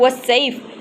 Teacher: مثلا صاد میں صفت لازمہ استعلا اور اطباق ادا نہ کرنے سے معنی غلط ہو جاتا ہے۔ صاد میں صفت استعلا اور صفت اطباق پایا جاتا ہے